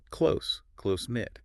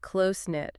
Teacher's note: with closenit the emphasis is on the first part